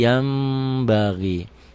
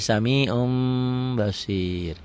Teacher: Basir yanbagi Yan yanbagi dibacanya Jadi yambaghi kenapa karena nun mati nun mati nun sukun ketemu ba satu kata satu kalimat bunyi n-nya berubah menjadi m · Bunyi n-nya berubah menjadi m samar sedikit seperti ikhfa Safawi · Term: iqlab